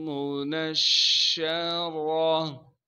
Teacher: نون کو ہم شین سے ملا دیں گے کیونکہ شین پر تشدید ہے، تشدید ہونے کی وجہ سے تھوڑا سا ٹھہراؤ رکھیں گے